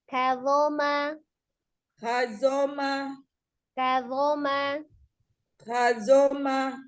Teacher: ujung lidah dikeluarkan sedikit ya. Ada di ujung gigi seri bagian atas hanya dia termasuk huruf yang tebal, jadi dibantu dengan mengangkat pangkal lidah. Sama dengan huruf zal makhrajnya, tempat keluarnya sama. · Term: huruf zo